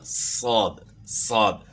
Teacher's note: تو سین کو ہم موٹا کریں گے تو صاد بن جائے گا